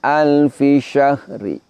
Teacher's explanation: Lafaz syahrin ketika kita praktekkan secara raum maka bunyinya menjadi syahri, namun bunyinya lemah. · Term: wakaf raum